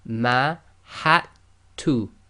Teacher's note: Okay, so the dal followed by the ta. The dal is sakin, so in this case we're going to totally ignore the dal